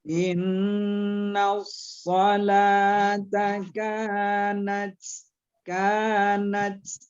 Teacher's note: tanya kita letuskan karena dia termasuk huruf khamas atau huruf mahmus